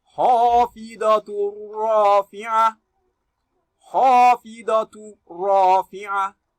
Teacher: You are having tongue with double dhamma here, and after it is ra'un, and ra'un is one of the letters of idgham bighairi gunna. So you read with single dhamma and drop the second one, which is your tanween. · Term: idghamun bighairi gunna